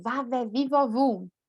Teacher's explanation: V, diente superior com lábio inferior.